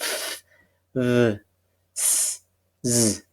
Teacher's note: we narrow down the air pass of the airflow, and we have then the sound quality will be something like a hissing sound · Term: fricative